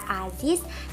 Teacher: bila sebagai koda dilafalkan sebagai bunyi Z atau bunyi S, misalnya pada kata aziz dilafalkan aziz atau asis.